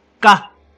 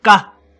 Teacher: This is high tone and unaspirated.